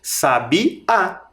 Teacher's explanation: Em sabiá, a sílaba mais forte, a sílaba tônica, aquela que sai com mais força da nossa boca, é o A.